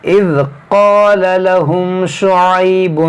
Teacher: قاف موڑا پڑھیں گے، الف مدہ کھینچیں گے، لام کو نہیں کھینچیں گے